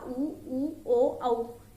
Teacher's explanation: पश्च स्वर में क्या है, जीभ का पिछला भाग ऊपर उठता है, इसमें बड़ा आ, ऊ, ओ, औ।